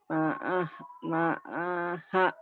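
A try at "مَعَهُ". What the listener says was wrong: Ujung yang panjang.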